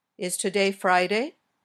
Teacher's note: These questions usually have rising intonation. Your voice goes up at the end.